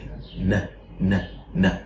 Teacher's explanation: the organs of speech block the air stream. So there is no place for the air to escape from except your nose. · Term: nasal sound